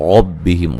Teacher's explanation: ربہم را کو موٹا ادا کریں گے